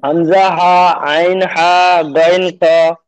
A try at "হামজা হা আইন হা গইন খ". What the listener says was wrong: মাশাআল্লাহ, জি